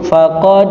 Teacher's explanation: Jadi harus ada pemantulan. Walaupun tidak sekuat pemantulannya ketika qalqalah kubra. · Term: qalqalah sughro